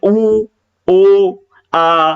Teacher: ऊ करोगे तो होठ गोल हो जाते हैं, है ना, वृत्ताकार हो जाते हैं।